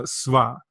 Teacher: I like to describe this as in between the V that we know and in between the W that we know. So again, it's going to sound a lot like the W with a slight V sound to it